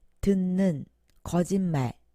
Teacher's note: 모두 비음 앞에서 니은으로 발음됩니다. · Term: 비음화